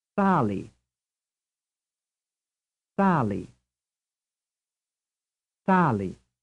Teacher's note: Which syllable is stressed, the first or the second? Sali. The answer is the first.